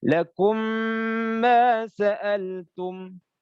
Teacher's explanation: mim itu makhrajnya ada di di bibir makanya harus mingkem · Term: idgham syafawi